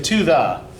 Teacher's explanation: if we say to thee these are clearly unstressed